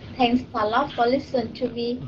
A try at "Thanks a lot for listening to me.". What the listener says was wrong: Đừng có thank, thanks. Thanks for listening to me. Thanks, đừng có thank ha.